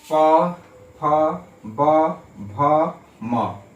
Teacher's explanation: ओठ जो है एक दूसरे से क्या है? टच हो रहा है, स्पर्श कर रहा है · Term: पवर्ग